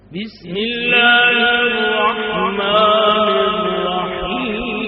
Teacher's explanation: با کو معروف پڑھنا ہے، بیس نہیں پڑھنا